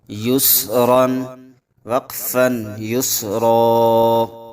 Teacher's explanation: تنوین پر ہم نے غنہ نہیں کیا کیونکہ اس کے آگے والے لفظ کے شروع میں حمزہ حروف حلقی میں سے آ رہا ہے